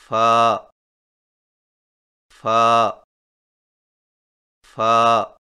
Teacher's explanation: فا کی ادائیگی میں سامنے والے اوپر کے دو دانتوں کے سروں کو نچلے ہونٹ کے گیلے حصہ پر لگا کر باریک آواز میں پڑھیں